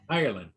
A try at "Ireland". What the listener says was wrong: You gotta say Ireland. Say it slower for us. You said it too fast. You're like Ireland.